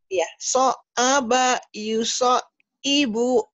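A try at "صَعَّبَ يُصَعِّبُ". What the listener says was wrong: Kurang neken ainnya nih digini-gini ya. So so aba yuso ibu. Kurang neken, kurang neken. Kayak nelen. So aba. Kayak nelen ya. So aba. So aba dilatih lagi. So aba.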